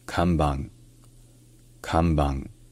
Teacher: Donc au début c'est kam et non pas kan. Et enfin, le N qui est en fin de mot, ça se prononce dans la gorge. Ça se prononce un peu comme un son nasal au même endroit que le R français. Donc ça devient kanban.